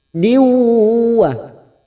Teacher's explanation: Setiap nun sukun atau tanwin yang bertemu dengan 4 huruf ini namanya idgham bigunah, masuk dan mendengung, masuk pada huruf depannya yaitu huruf waw